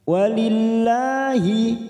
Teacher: lam jalalah yang didahului kasr kita baca tarkik